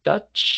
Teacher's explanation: si usted se toca la garganta, no va a sentir vibración. Sonido sí hay, vibración es la que no hay.